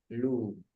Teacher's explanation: ketika dhammah bibirnya dibulatkan.